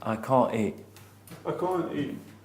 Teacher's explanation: That's called a glottal stop. That is very common in the UK.